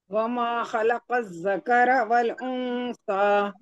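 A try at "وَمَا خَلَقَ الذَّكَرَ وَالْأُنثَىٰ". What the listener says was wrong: ادائیگی پوری صحیح کریے، بس خلق آپ نے سیدھا پڑھا ہے. تینوں حرف وہ تینوں نہیں خلقہ کی جگہ ہم کیا پڑھیں گے؟ خلقہ. خلقہ.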